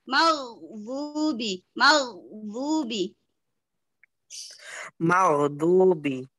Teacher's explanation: ghain bukan huruf qalqalah, jadi tidak boleh dipantulkan. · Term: wain sukun